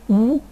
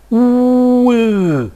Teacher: And finally, we have to produce cardinal vowel number 16. First of all, cardinal 8 with rounded lips, oo, and then I will unround my lips.